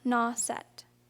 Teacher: was accented strongly on the first syllable the last fading away until it was almost inaudible